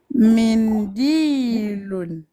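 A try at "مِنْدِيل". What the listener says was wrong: Très bien.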